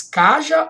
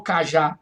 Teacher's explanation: Observe agora a tonicidade foi para a última sílaba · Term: oxítona